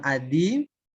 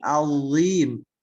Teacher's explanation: Nah, itu bukan adim, tapi azim. Cenderung lebih ringan, ada getarannya